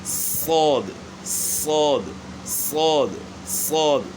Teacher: لیکن ہم عموماً جو ہے نا وہ بچے بھی بڑے بھی جو ہے نا وہ اس میں ہونٹ گول کرتے ہیں موٹا کرنے کے لیے, تو یہ طریقہ غلط ہے. ہونٹ یعنی استعمال نہیں ہوں گے, زبان تالو کی طرف اٹھے گی موٹا کرنے کے لیے.